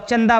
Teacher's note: अपने मुंह और नाक के पास लेकर जाओ और चंदा बोलो जब बोलोगे तो नाक और मुंह से आपको वायु निकलती हुई प्रतीत होंगी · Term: अनुनासिक